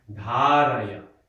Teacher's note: Okay, it's not ni, yupa, dharaya. No, first syllable is dha, long. Next syllable is short, ra, dharaya.